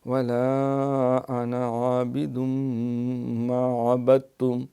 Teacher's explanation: یہاں خیال کرنا ہے، اکثر یہ نون کے ساتھ الف دیکھ کے ولا انا عابد کہتے ہیں، وہ الف لکھا ہوا ہے تو ہم تو پڑھیں گے، نہیں، یہ انا جو ہے جہاں بھی ہے لکھا جائے گا لیکن الف پڑھا نہیں جاتا